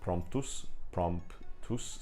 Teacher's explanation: three consonants there, we have MPT which is a pretty complex consonant cluster